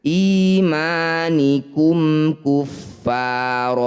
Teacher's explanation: kuar fathah tanwin dihentikan ron ini disebut bacaan mad iwad iwat itu artinya pengganti. Cara bacanya bunyi fathah tanwin kita ganti jadi fathah panjang. Awalnya imanikum kuaron ketika dihentikan.